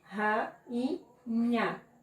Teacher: Hiato, hiato, duas vogais, diferente do ditongo, em sílabas diferentes